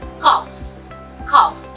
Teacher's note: there is no vibration in the consonant f